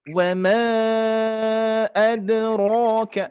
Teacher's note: untuk bacaan tawasud ini penengah yaitu 4 sampai 5 ya. Ya, kita patok 4 harokat saja.